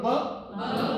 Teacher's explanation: क्योंकि बी जो साउंड है, योर टू लिप्स आर, बोलो ब, क्या हो रहा है? Your to lips are blocking the sound and then the air is coming out with obstruction